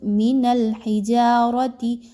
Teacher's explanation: را کے اوپر چونکہ زبر ہے اس لیے اس را کو پر پڑھا جا رہا ہے